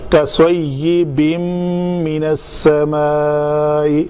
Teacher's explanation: تنوین کے بعد حرف میم آ رہا ہے یرملون میں سے، تو یہاں پہ ادغام ہوگا